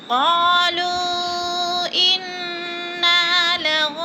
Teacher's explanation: نون کو وقف کی صورت میں ساکن کر دیں گے.